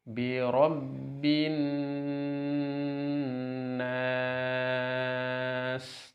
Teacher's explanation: Mad arid sukun panjangnya boleh 2, boleh 4, boleh 6 harokat. Di sini kita baca 6 harokat. Sekali lagi nun tasydid di sini dikasih tempo yang lama, yang panjang. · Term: mad arid lisukun